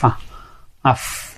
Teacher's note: সামনের 2টি দাঁতের অগ্রভাগ আর নিচের ঠোঁট, এগুলো মিলে উচ্চারিত হচ্ছে ফা